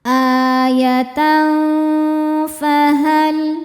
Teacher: Karena ada tanwin fathah menghadapi huruf fa. Cara bacanya tanwin disamarkan ke fa disertai dengungan. Dengung dan samarnya ya sama besar. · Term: ikhfa hakiki awsat